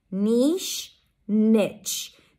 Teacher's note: an N sound, E as in sit, and ch, t, sh, together